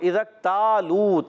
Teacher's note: کاف کو ساکن ہے، اور کاف شدیدہ محموسہ حروف میں سے ہے